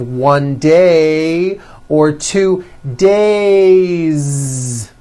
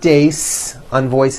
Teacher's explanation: It's days with a voiced Z ending.